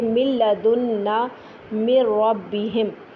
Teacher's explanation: اور اگر نون ساکن یا تنوین کے فوراً بعد را یا لام میں سے کوئی آ جائے تو ہم نون کو پوری طرح اس میں ملا دیتے ہیں کہ نون کا کوئی بھی عکس باقی نہیں رہتا، غنہ بھی باقی نہیں رہتا